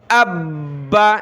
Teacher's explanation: یعنی جب یہ پیچھے کسی لفظ سے ملائیں گے تو دو بار پڑھا جائے گا۔ حمزہ کو با کے ساتھ ملائیں گے تو با دو بار پڑھا جائے گا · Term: تشدید